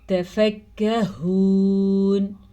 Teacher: باریک کاف ہے، اس کو موٹا نہیں کرنا آپ نے